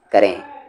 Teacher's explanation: नून गुन्ना है लास्ट में, आवाज़ नाक में जाएगी